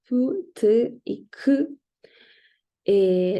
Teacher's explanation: se opone totalmente el aire y donde sale este aire de forma explosiva, ¿ya? Los oclusivos son los fonemas pu, t y k.